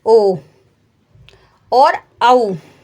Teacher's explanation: ओ और औ जो वर्ण होते हैं ये कंठ ओष्टम वर्ण होते हैं। यानी इनको बोलने के लिए कंठ और ओष्ठ दोनों ही उच्चारण स्थानों का प्रयोग करना पड़ता है। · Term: कंठ ओष्ठम